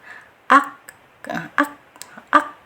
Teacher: untuk huruf kaf ini tetap dia masuk ke huruf syiddah, yaitu ditahan dulu suaranya